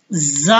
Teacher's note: जुबान की नोक को सनाया सुफलिया के किनारे और सनाया उलिया के साथ लगाने से